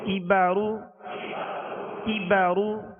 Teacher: کاف کو باریک پڑھنا ہے، یہ ڈنڈی والا کاف ہے، اور را کو پر پڑھنا ہے، را پر پیش ہے